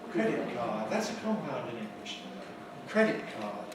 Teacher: Credit is the main stress.